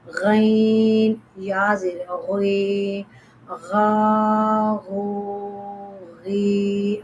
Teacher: This is pronounced from the top part of the throat, like kha. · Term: Ghain